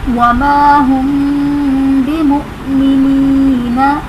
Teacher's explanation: مؤمنین میں حمزہ ساکنہ ہے جھٹکا دے کر پڑھیں گے. یا ساکن سے پہلے زیر ہے تو یہاں پر یا مدہ کا قاعدہ بن رہا ہے اس لیے اسے ایک الف یعنی 2 حرکات کے برابر کھینچ کر پڑھیں گے · وَمَا هُمْ بِمُؤْمِنِينَ وَمَا هُمْ میں الف سے پہلے زبر ہے الف مدہ کا قاعدہ ہے. میم ساکن کے بعد حرف با آ رہا ہے تو یہاں پر اخفاء شفوی کا قاعدہ ہوگا یعنی غنہ کر کے پڑھیں گے. مؤمنین میں حمزہ ساکنہ ہے جھٹکا دے کر پڑھیں گے.